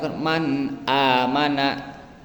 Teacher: dibaca Idhar jelas tanpa ada gunah maka demikian karena di sana dipertemukan huruf nun mati dan Hamzah